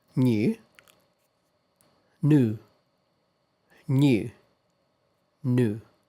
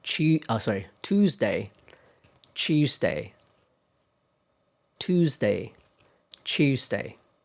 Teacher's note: This time I said the American pronunciation first. So British English, the pronunciation usually includes y sound. In American English, however, that sound is not really there.